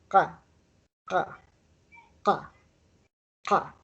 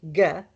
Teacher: The Q is like a K, but it's farther down in your throat. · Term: Q sound